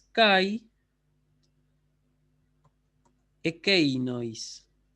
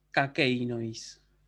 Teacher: Lo que debería decir acá es kai ekeinois. Pero el diptongo ai con la e se fusionaron y quedó kakeinois. Y esa alfa con espíritu, que en realidad ya digo, no es un espíritu, sino un coronis, el coronis es el indicio de que hubo una fusión de palabras.